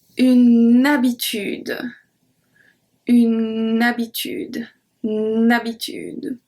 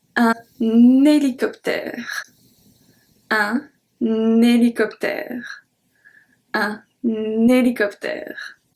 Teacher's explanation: with H muet, so acting as a voyelle, so we link.